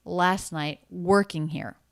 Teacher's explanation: here stress unstress stress unstressed unstressed last night working here so the ing ending and the word here flatter lower in pitch coming down in vocal energy